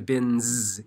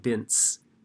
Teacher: the N in bin changes the S at the end to bins instead of bints. So, but if you have bit, which does not vibrate, the S is pronounced like a normal S sound, bits.